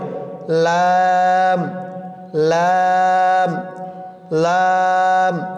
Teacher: জিহ্বার আগার কিনারা সামনের উপরের দাঁতের মাড়ির সঙ্গে লাগিয়ে উচ্চারিত হয়